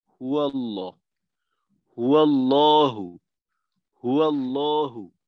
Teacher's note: তো এইখানে হুয়ার ওয়াওয়ের জবরের সহায়তায় লামের তাসদীদ উচ্চারিত হবে।